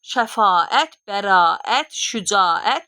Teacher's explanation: Necə yazılıbsa, elə də tələffüz olunurlar. Bircə a birləşmələrində sadəcə a-nın uzanmasını görür.